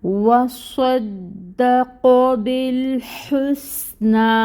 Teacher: واو کی ادائیگی کے لیے لپس کو راؤنڈ کرنا ہے اور پھر فتحہ کے لیے کھولنا ہے۔ فتحہ کی حرکت ادا ہوگی ایک حرکت کے برابر 1 کاؤنٹ۔